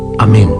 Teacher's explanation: la vibración se debe a su final tónico acentuado y a la consonante nasal con que acaba es una voz llena de música pertenece a esa clase de